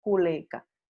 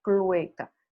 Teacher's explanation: Por ejemplo, esa gallina está culeca, pero la palabra real es clueca. Aquí lo único que ocurrió fue que la L cambió, se movió de lugar. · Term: metátesis